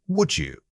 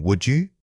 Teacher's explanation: the D in would often reduces or links with the following vowel. Instead of saying would you, your breath should guide it smoothly from one syllable to the next.